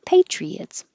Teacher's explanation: This Y is here because once your tongue is up for a E, patriot is going to slide down and make a intrusive Y.